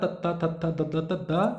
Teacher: ਦੰਤੀ ਦੰਦ ਦੇ ਨਾਲ ਸਰ ਜੀ ਸਾਡੀ ਜੀਭ ਲੱਗ ਰਹੀਹ ਤਾਂ ਦੰਤੀ